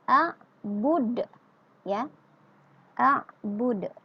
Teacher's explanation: dimatikan huruf dalnya menjadi baris sukun dan dipantulkan huruf dalnya. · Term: qalqalah kubra